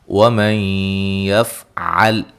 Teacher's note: یہاں نون ساکن کا ادغام مع الغنہ ہے